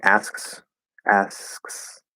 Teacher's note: you start the s you go into the k and then you go right back into the s it's pretty easy um if you do sps so like if